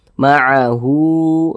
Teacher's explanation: Mad istilah qasirah panjangnya dua harakat